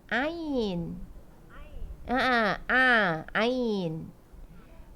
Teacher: kita tutup hidung pun tetap berbunyi sebab dia bunyi dia di halqum, kan? Okey, atas sekali hujung halqum tu apa bunyi dia?